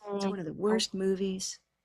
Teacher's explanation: It's one of the worst movies because movies is still going to get the biggest stress.